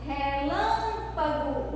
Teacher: O lã é a sílaba tônica dessa palavra.